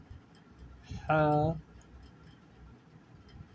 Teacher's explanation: جو ہے یہ حروف حلقی میں سے ہے، ابتدائی حلق سے ہا کی آواز نکلتے ہیں۔